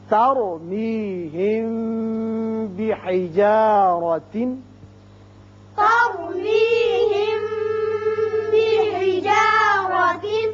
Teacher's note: جب میم ساکن کے بعد با آ جائے تو اسے اخفائے شفوی کہتے ہیں، یہاں ایک الف کے برابر آواز ٹھہرتی ہے